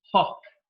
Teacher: is a voiceless sound because the vocal cords are held apart from each other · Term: fricative